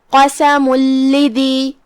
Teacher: لام حروف الادغام بغیر غنہ میں سے ہے تو ہم یہ تنوین کو لام میں داخل کر کے بغیر غنہ کے لیکن تشدید کے ساتھ یہ حکم کو ادا کریں گے · کلمت قسم یہاں حرف القاف ہے، قاف کی ادائیگی زبان کے جڑ اور تالو کے نرم حصے سے ہے. قاف حروف تفخیم میں سے بھی ہے تو ہم اسے بھاری آواز میں پڑھیں گے